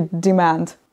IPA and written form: dɪmænd (demand)